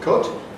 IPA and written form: kʊt (cut)